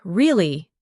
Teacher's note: when you ask a question like, Really? your voice goes up slightly at the end